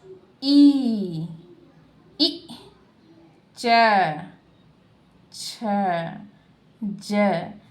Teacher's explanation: इन सबको उच्चारण करने में हमारे तालु का मुंह के अंदर जो तालु है उससे उच्चारण होता है। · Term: तालव्य